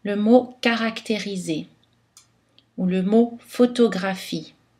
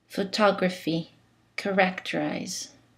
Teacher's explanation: Tous les A sont prononcés A et les O sont prononcés O parce qu'aucune syllabe n'est réduite. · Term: égalité syllabique